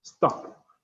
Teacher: the fourth tone is the falling tone, totally falling. Yes, so pronounce as if you saying an order like stop.